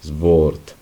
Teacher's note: La primera particularidad que observamos sobre esta palabra es la W. La W en alemán siempre suena como una V alargada, dentilabial, y es un poco más alargada que nuestra V en español, es fuerte.